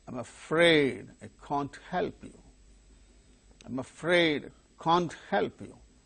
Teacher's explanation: the model verb, that is the helping verb, can't, gains stress in order to convey the negative meaning.